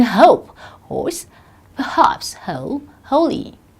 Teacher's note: voiceless glottal fricative as in hope horse perhaps whole holy